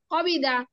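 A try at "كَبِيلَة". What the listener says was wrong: না, ওটা লাম লাম আপু।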